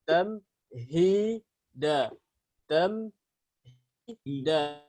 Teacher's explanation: Hi harus dari tenggorokan, dari pita suara, bukan dari mulut